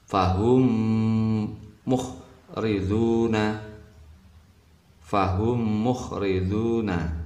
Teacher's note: bacaan idgham misli, mim ketemu mim, mim mati ketemu mim, idgham misli atau mislain.